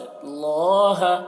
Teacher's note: اللہ کلام کو پر پڑھیں گے کیونکہ اللہ کلام سے پہلے زبر ہے